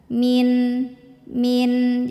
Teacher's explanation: kalau nun mati ketemu sama Ain maka bunyi Nun ini jelas bunyi n jangan ditahan jangan diputus juga min min jadi pasti ada suara n-nya tapi